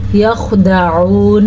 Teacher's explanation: وما یخدعون، پھر سے ہم نے خا کو پر پڑھا ہے، خا ساکن ہے لیکن پھر بھی خا کو پر پڑھنا ہے